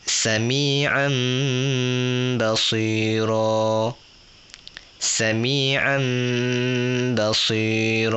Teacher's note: nun mati ataupun tanwin bertemu ba satu je huruf nun mati atau tanwin bertemu ba dia akan jadi iqlab iqlab ni bacaan dia suara kita berubah bacaan kita berubah menjadi mim · Bacaan A tu akan jadi am terus. Masuk ke menjadi mim. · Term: iklab